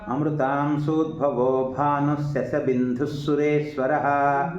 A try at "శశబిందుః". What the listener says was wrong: శశబిందు ఒత్తులేదండి.